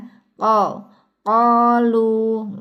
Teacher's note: pangkal lidahnya bertemu dengan langit-langit yang di belakang yang lunak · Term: qof